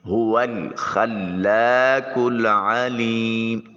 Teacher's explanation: ہا کو اقصی حلق سے ادا کریں گے۔ واو کی ادائیگی کے وقت ہونٹوں کو گول کریں گے اور واو کو لام کے ساتھ ملائیں گے۔ · خا جو ہے یہ حلق سے ادا کریں گے، لام کے اوپر الف المدیہ الصغیرہ یعنی کھڑی زبر ہے، اس کو ایک الف کے قائم مقام لمبا کریں گے۔ هو الخلاق العلیم، قاف کو موٹا اور پر کر کے ادا کریں گے۔ · واو کی ادائیگی کے وقت ہونٹوں کو گول کریں گے اور واو کو لام کے ساتھ ملائیں گے۔ خا جو ہے یہ حلق سے ادا کریں گے، لام کے اوپر الف المدیہ الصغیرہ یعنی کھڑی زبر ہے، اس کو ایک الف کے قائم مقام لمبا کریں گے۔